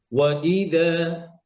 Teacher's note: হ্যাঁ, আর এখানে এই যে ওয়াওটা কিন্তু আলাদা শব্দ, ইদা। তো হামজাটা একটু শক্ত করবেন, একটু আওয়াজটা হামজার বড় করবেন যেন বোঝা যায় আপনি আলাদা করে পড়তেছেন।